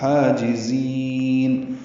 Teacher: ہا وسط حلق سے ادا کریں گے، دو حرکات لمبا کریں گے